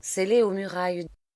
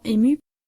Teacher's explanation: l'aspiration des voyelles engendre un effet de cassure inévitable